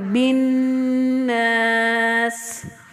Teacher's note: قُلْ أَعُوذُ بِرَبِّ النَّاسِ، بن، یہاں پہ نون پہ ہمیشہ غنہ ہوتا ہے، ٹھیک ہے، نون میں تھوڑی دیر آواز کو ناک میں لے کے جانا ہوتا ہے اور گنگنی سے پیدا کرنی ہوتی ہے